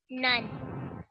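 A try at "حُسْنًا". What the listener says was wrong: Okay, and remember when we just did tanveen? We said we have to make a prolonged nasal sound slightly.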